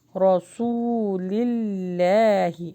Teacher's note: رو کو ہیوی پڑھیں، را نہیں پڑھنا، رو پڑھنا ہے، سو واو مدہ لانگ ہوگا، رسول اللہ۔